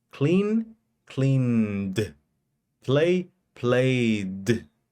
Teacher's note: cuando ese sonido antes de ed vibra, en el pasado el ed se pronuncia como d. Clean, cleaned.